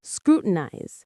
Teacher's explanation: The stress is on the first syllable, screw, and that eyes at the end sounds like the word eyes, scrutinize.